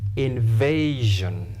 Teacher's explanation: because the word ends in S-I-O-N, you stress penultimate, second syllable